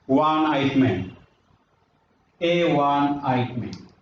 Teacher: The reason is that the first letter, in spite of its being a vowel, it sounds wa. So according to the rule, if any word begins with a wa sound, we have to use a instead of n.